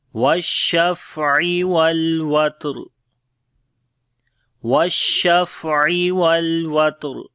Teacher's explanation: واو کو شین کے ساتھ ملائیں گے